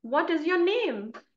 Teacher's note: here I have used the rising intonation because uh actually I I'm asking a question